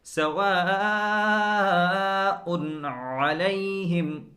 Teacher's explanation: حمزہ حلق کے پہلے والے حصے سے ادا ہوتا ہے، عین حلق کے بیچ والے حصے سے ادا ہوتا ہے۔ حمزے کے بعد فوراً عین کی طرف آنا ہے تو دھیان رکھیں کہ حمزے کو پورا ادا کریں اور عین کو بھی اس کے اپنے مخرج سے بالکل گاڑھ کر نچوڑ کر ادا کریں۔